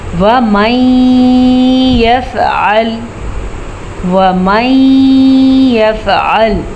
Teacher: नून साकिन के बाद यमून में से या आया हुआ है तो हम इन दोनों को आपस में मिला के गुन्ने के साथ पढ़ेंगे, इसे कहते हैं इदगाम बिल गुन्ना।